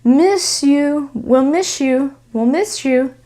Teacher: because of the S and the Y sounds here together, we're gonna connect there